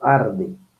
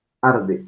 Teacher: las características de este fonema vibrante simple dental sonoro